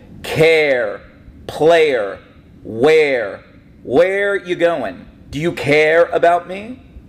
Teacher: Another example of a Northern Jersey accent, we sometimes pronounce the R at the end of our words